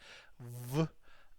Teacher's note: Your top teeth have to touch your bottom lip, v, and not like b.